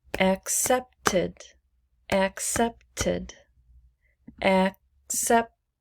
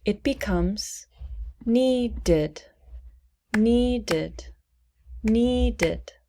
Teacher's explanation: So, in this case, the ed is pronounced id. Not ed, id.